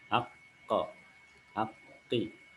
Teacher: Pangkal lidah menyentuh pada langit-langit bagian lunak dari tenggorokan kita. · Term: huruf qaf